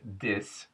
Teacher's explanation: The TH at the beginning of a word, however, becomes a D.